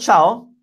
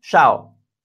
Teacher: in the area of Rome, which is where I'm from, the dialect doesn't have the ch sound, it has the sh sound